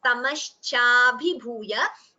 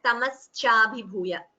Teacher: It should be chanted as Sha and not as Sa. So there's a tendency to chant Sa.